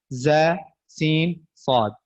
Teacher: ठीक है, और इन तीनों को हरूफ सफीरिया कहते हैं, और सफीरिया इसलिए कहते हैं कि इसमें सीटी की आवाज पाई जाती है